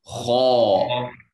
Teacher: It's heavy. It has to have that aw sound. Ha. Ha, ah, ha, fatha, ha.